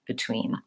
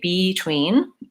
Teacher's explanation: your tween is long and clear and your first syllable is short and reduced